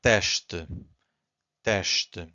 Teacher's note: So again, S before a consonant, it's a sh. Two syllables here, we have to stress the first one, so it's teste. So we stress this one, and the second one is weak.